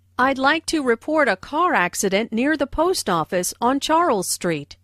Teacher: Notice how the key words car accident, post office, and Charles Street are stressed.